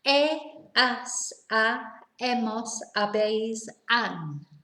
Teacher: Because we don't pronounce the H.